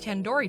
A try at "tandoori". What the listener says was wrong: Tandoori. The do isn't like in door. It's like doo-doo head.